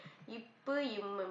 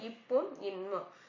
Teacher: மேல் இதலும் கீழ் இதலும் பொருந்துவதால் பிறக்கும் எழுத்து